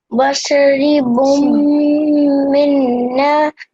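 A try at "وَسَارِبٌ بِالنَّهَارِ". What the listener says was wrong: The only thing that you missed out was the alif madda here. So wasaribum bin nahari. Bum bin nahari.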